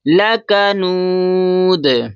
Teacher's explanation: اب دال حروف قلقلہ میں سے ہے تو جب جزم میں آئے گا تو یہاں پر قلقلہ کریں گے